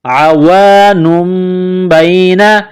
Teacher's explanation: عین کو گلے سے نکالیں گے